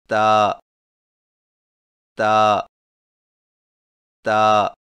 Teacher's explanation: تا کی ادائیگی میں زبان کی نوک کو سامنے والے اوپر کے دو دانتوں کی جڑ سے لگا کر باریک آواز میں پڑھیں